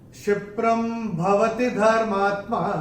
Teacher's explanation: पहले चरण में प के ऊपर अनुस्वार के बाद का अक्षर है भ, और अनुस्वार के बाद जब भ आएगा तो अनुस्वार का उच्चारण होगा म